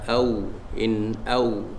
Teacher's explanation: Sebelum waw, sebelum ya ada fathah maklin. Jadi kita baca dengan lunak.